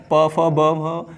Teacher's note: उसने ओष्ठों को अपने गोल किया था, ऊ की आवाज़ निकली थी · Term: ओष्ठीय